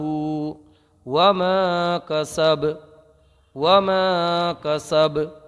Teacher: جب کسب کریں گے تو با ساکن ہو جائے گا، با جب ساکن ہوگا تو با کیونکہ حروف قلقلہ میں سے ہے تو یہاں پر قلقلہ ہوگا، یعنی آواز پلٹ کے آئے گی